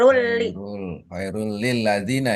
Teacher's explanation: Idgam itu namanya ya. Ini idgam bila gunah. Jadi dimasukkan tapi tidak disertai dengung.